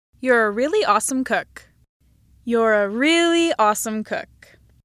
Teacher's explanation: These first 2 examples are those with an H star pitch accent on the word really.